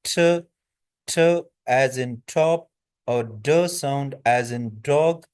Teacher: तो जो टंग है वह अल्वओलर रि को टच करती है कहां पर? फ्रंट टीथ जो है ना ऊपर वाले जो हमारे टीथ हैं इसके बिल्कुल बैक साइड पे ये अल्वियोलर रि है। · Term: अल्वियोलर साउंड्स